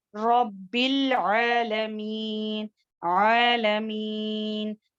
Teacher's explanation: عالمین پڑھیں گے حمزہ کی طرح نہیں پڑھیں گے, عالمین نہیں کریں گے.